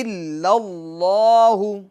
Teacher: یہ جو لفظ اللہ کا جو لام ہے اس کو پور کرنا ہے۔